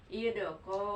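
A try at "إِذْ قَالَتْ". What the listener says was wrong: Jangan dilepas ya kalau titiknya. Izko ditahan. Kalau dilepas jadi ayadanya. Kalau ditahan izko. Ditahan jadi agak lambat. Izkolat.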